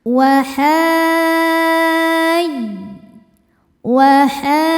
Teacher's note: Maka h-nya wajib dipanjangkan en harakat. Kemudian ketika berpindah dari mad ke tasydidnya kita pakaikan nabr. Naikkan intonasi suara.